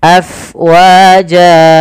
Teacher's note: Kemudian pada lafal fa, alirkan nafasnya, karena fa itu harus ada angin yang kita keluarkan karena dia sifatnya hams, mengalirnya nafas.